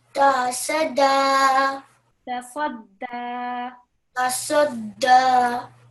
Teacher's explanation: Bit more emphasis on the dal because it's carrying the shadda.